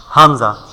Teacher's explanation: উচ্চারণ হয় হা সমস্ত জায়গা পাক থাকে হা তারপরে হামজা হামজা হামজা আর হা এক জায়গায় উচ্চারণ হয় হামজা হামজা একেবারে হলকের শুরু হইতে হলক মানে কণ্ঠনালী